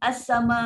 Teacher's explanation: ini perempuan dah hilangkan hamzah, hamzah dah hilang dan suara tu pun lepas